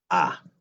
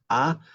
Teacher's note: La A es una vocal abierta, central, baja y se pronuncia A.